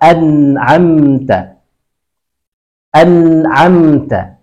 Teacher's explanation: Huruf nun masih di tempat yang sama, an'amta. An'amta, ada getaran di tenggorokan yang menunjukkan ada bunyi di situ, sehingga ketika ada bunyi berarti sifatnya adalah jahar